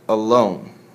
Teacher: an unstressed syllable followed by a stressed syllable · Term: I am